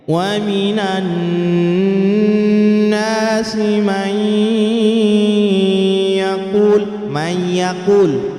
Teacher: nun sukun bertemu ya, itu huruf idgham yang biguna. May yaqul, dua ketukan.